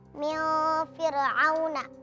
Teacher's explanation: Karena nun sukun bertemu dengan huruf fa, dibaca dengan samar. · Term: ikhfa hakiki